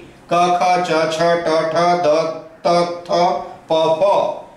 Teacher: इनको बोलने में स्वरतंत्र में कंपन नहीं होता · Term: अघोष